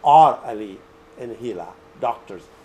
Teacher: When you read it, rising intonation.